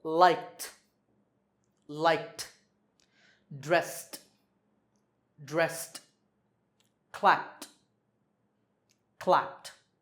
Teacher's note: So when the last sound is voiceless, we say t for the ed ending.